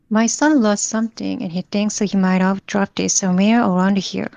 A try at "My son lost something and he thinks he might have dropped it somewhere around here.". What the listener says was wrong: 근데 전반적으로 intonation이 더 좋아지려면 somewhere around here가 좀 더 숨을 죽이세요, 여기를. 여기 존재감이 너무 느껴지면 안 돼요.